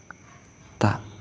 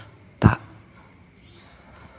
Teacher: ujung lidah merapat dengan lurus tanpa ditekan pada pangkal beberapa buah gigi bagian atas. Kemudian ucapkan ta. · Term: huruf ta